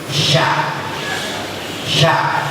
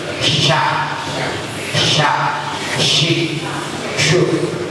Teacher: Tengah lidah tempelkan ke langit-langit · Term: huruf shin